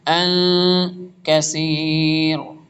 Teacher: نون ساکن کے بعد کاف آ رہا ہے، اخفا